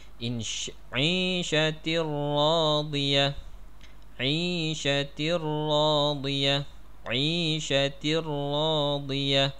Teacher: Tanwin tu tadi sudah masuk ke dalam ra. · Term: tanwin bertemu dengan ra